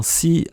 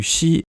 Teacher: autrefois on prononçait bien « si », avec le temps c’est devenu « shi » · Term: palatalisation